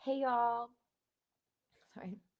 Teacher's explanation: she was kind of annoying me with the vocal fry